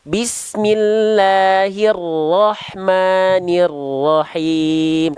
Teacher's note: huruf ro-nya dikurangi lagi sedikit getarannya ya